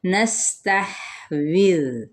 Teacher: سین پہ سیٹی، ہا پہ ہمس اور زال نرمی کے ساتھ